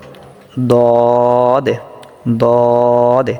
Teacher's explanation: আচ্ছা, মাখরাজটা হলো জিহ্বার গোড়ার কিনারা সামনের উপরের এক পাশের দাঁতের গোড়ার সঙ্গে লাগিয়ে দদ উচ্চারিত হয়